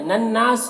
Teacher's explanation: نون مشدد غنہ ہوگا اور یہاں پر الف مدہ ہے، اور یہاں پر تا وقف مطلق کی علامت ہے، وقف کریں گے تو سین کا زیر سکون سے بدل جائے گا، تو پھر یہاں پر مد عارض وقفی ہوگا، اور اس میں طول، توسط، قصر تینوں جائز ہوتا ہے۔